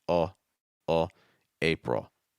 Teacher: this is a dark l sound it's going to sound like oh at the end lower pitch